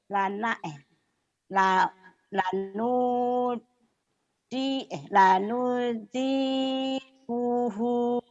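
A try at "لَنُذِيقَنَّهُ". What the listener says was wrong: Ko, bukan ku. Lanudikohu.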